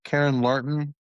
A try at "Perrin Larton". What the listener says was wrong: Perrin with a P.